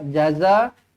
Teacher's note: za dibaca dengan panjang 4 ataupun 5 harakat.